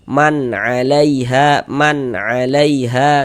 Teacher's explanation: Bunyi nun sukun atau bunyi tanwinnya dibaca jelas kemudian tidak didengungkan maka dibaca pendek saja. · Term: izhar halqi